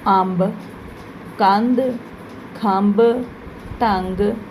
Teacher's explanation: ਟਿੱਪੀ ਵੀ ਇੱਕ ਨਾਸਿਕ ਧੁਨੀ ਹੈ ਜਿਸ ਨੂੰ ਬੋਲਣ ਵੇਲੇ ਆਵਾਜ਼ ਨੱਕ ਵਿੱਚੋਂ ਆਉਂਦੀ ਹੈ ਇਹ ਅੱਖਰ ਦੇ ਉੱਪਰ ਅਤੇ ਲਗਾਂ ਦੇ ਨਾਲ ਵਰਤੀ ਜਾਂਦੀ ਹੈ।